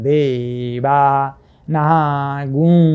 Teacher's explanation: यसरी देवाना आकारदेखि परिरहेको अनुस्वार ह्रस्व हुनु पर्थ्यो, तर यहाँ चाहिँ यो नियम अनुसार पछाडिपट्टि हकारसँग रिकारको संयोग भएको हुनाले अगाडिको गु दीर्घदेखि परिरहेर पनि दीर्घ नै भयो। त्यसकारण देवा नागु यसरी दीर्घ उच्चारण हुन्छ।